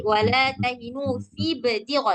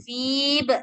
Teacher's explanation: Nah, jangan dipanjangin lagi, langsung masuk ke ba.